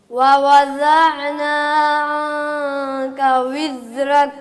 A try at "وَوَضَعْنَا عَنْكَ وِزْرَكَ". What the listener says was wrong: صرف زا رہ گئی ہے، زا کو واضح کریں، دال نہ پڑھیں. را موٹا کریں، را پر کریں.